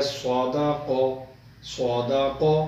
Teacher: صاد کو بھی موٹا، قاف کو بھی موٹا